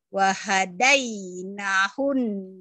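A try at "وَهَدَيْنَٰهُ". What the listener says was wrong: Salah, nanya panjang. Nanya panjang. Wa hadainahun najdain.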